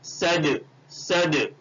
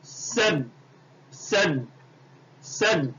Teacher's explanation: صد, دیکھیے یہ دال کے اوپر جزم آیا تو پڑھتے وقت دال کی آواز لوٹے گی